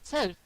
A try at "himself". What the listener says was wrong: You forgot the f at the end. Himself. Yeah, you got to get the f in.